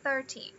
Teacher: a primeira sílaba é a forte, é a primary, e a segunda ela é unstressed. Olha só, o marcadorzinho ele tá aqui.